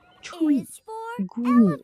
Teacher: Next, we have the long E sound. This is a longer, clearer E sound, like what you hear at the beginning of the word eat, or in words like tree and green.